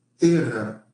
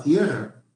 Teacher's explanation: pero la e tónica pasó a un ditongo